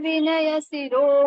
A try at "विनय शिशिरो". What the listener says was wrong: ये देखो, विनय शिशिरो, दो शी है ना, एक ही क्यों बोल रहे हो? दो शी। विनय शिशिरो मोग, मोग्ध्य, मोग्ध्य मसृणो, ऐसा।